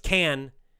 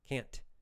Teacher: It's a little, there's a little extra beat if you think of it like music, a little extra quick beat for the negative word